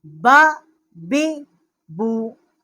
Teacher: یہ با کا جو مخرج ہے یہ با ہونٹوں کی تری سے ادا ہوتی ہے، اس لیے اس کو بحری کہتے ہیں۔